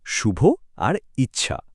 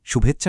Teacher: আর এখানেই হচ্ছে আসল জাদুটা। এই অ আর ই যখন পাশাপাশি আসে, তখন ওরা মিলেমিশে গিয়ে একেবারে নতুন একটা সাউন্ড তৈরি করে ফেলে, যেটা হলো এ। আর তার ফলেই জন্ম নিল শুভেচ্ছা শব্দটা।